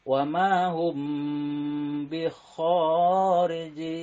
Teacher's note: Cara membacanya yaitu samar di antara 2 bibir atau suara M dan ditahan 2 sampai dengan 3 harokat. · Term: ikhfa syafawi